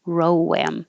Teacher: It should sound like lamb, but row. Now you go from rounded to unrounded, and there'll be an invisible W.